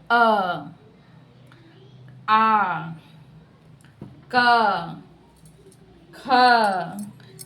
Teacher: हम जब बोलते हैं अ तो इसका उच्चारण कैसे निकलता है? कंठ से निकलता है। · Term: कंठ्य